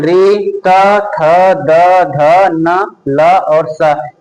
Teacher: इस इन वर्णों का उच्चारण स्थान हो जाएगा दंत।